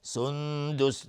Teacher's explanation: سندس نون ساکن بعد دال اخفای حقیقی